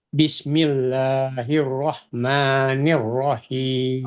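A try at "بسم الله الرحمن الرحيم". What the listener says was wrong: Hanya kurang hamis, kurang mengalir. Jadi la-nya L-nya harus tegas dan la-nya ini 2. Bis ini ya bis itu benar tadi ringan. Bismillah 2. Jadi hanya ini dikasih 2 kayaknya.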